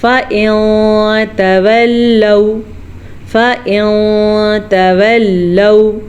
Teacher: हम नून साकिन को छुपा के पढ़ेंगे और गुन्ने के साथ पढ़ेंगे। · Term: इख़्फ़ा